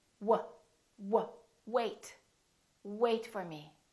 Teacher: you need to round your lips, W, W, and you need to have a lot of air coming through. So make sure that your vocal cords are vibrating and that there is air coming out of your lungs. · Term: W sound